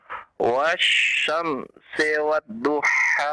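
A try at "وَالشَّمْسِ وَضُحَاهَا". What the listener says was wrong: Jangan wad. Jangan ditekan. Wa sendiri, du sendiri. Iya, masing-masing. Tidak ada tasdid ya.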